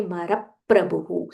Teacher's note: This is pra, half pa and a full ra.